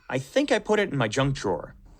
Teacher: so think stressed has a little bit more length